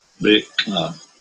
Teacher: there's an implosive there at the beginning